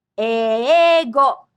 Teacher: The initial e is a double vowel or long vowel pronounced e. You can have syllables without a consonant.